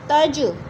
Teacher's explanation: جیم ساکن ہے، حروف قلقلہ میں سے ہے، قلقلہ ہو رہا ہے